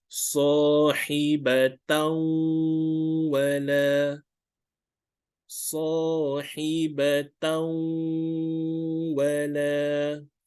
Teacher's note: we have to nasalize for 2 counts